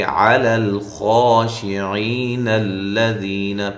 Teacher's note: یا مدہ کو صرف ایک الف کی مقدار کے برابر لمبا کریں گے۔